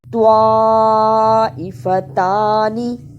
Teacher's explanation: طوا پر زبر اور بڑی مد ہے، اسے صحیح ادا کرنا۔ بڑی مد کو ادا کرنے کا طریقہ، 4 بند انگلیاں باری باری کھولیں، اتنا لمبا کرنا ہے۔ · طوا، حمزہ کے نیچے زیر، اسے جلدی پڑھنا، فا پر زبر، اسے بھی جلدی پڑھنا، تا پر کھڑی زبر ہے، اس پہ تھوڑی دیر لگانی اور نون کو جلدی پڑھنا